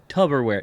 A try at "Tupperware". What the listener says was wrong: It's a P, babe.